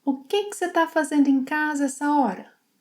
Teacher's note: She also shortens ‘você’ to ‘cê’, ‘está’ to ‘tá’, and she links most words.